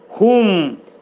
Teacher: Mim hərfini izhar edir. Ağız yumulur.